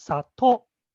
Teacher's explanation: It isn't the second o that you try to pronounce. Yes, the second to has a high pitch accent